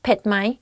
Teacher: don't forget to raise your tone up because it's the question